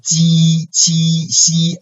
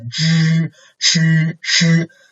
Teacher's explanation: 鸡, 七, 西 is like a surface. We use the surface of the tongue. Okay, and 知, 吃, 诗 we use the tip of the tongue.